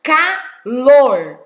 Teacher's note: olha como eu falo calor ó sílaba forte que é a última